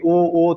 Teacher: कोई भी कंठ से इसमें चालू होगा, ख्याल रहे आपको। और ओ जब बोलेंगे ओ तो यहाँ पर ओष्ठ टच करेगा, इसलिए इसका हो जाएगा कंठ ओष्ठ। · ओ और औ का उच्चारण है कंठ ओष्ठ